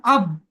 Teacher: বার উপরে সাকিন এসছে আর বা হুরফে কলকলা পাঁচটির মধ্যে একটি, তাই বা কে কলকলা করে ডান দিকের অক্ষরের সাথে মিলিয়ে পড়তে হবে